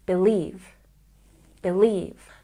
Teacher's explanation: we stress the second syllable believe